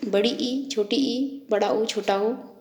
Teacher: इनका उच्चारण करते समय जीभ जब ऊपर उठती है तो मुख विवर संकरा हो जाता है। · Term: समवर्त